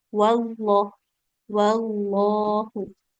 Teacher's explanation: Jadi bukan wawullah, tapi waw. Langsung masuk ke lam. Tapi memang lamnya tebal.